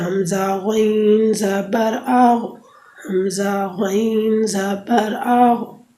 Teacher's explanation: غین حلق کے شروع سے جو منہ کی طرف ہے وہاں سے ادا ہوتا ہے